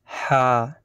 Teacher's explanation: এই অক্ষরটি উচ্চারণ হয় জিভের বা গলার গোড়া থেকে।